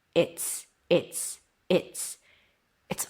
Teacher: The Z sound became an S because the T is voiceless. So it affected the Z sound of the is.